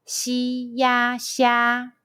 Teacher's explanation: Let's combine the initial xi, the final ya, and the high pitch first tone all together.